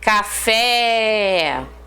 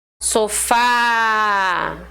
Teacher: reparou a última sílaba é mais forte ela recebe um acento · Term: oxítonas